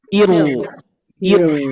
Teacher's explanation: ro sukun sebelumnya Hamzah wasal maka dibaca tebal